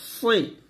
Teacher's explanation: সি হবে না, সিনের মতো হবে না, সদ মোটা করা হবে